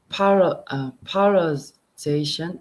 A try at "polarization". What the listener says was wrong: I think you're not saying the first part correctly. Polar. Pol.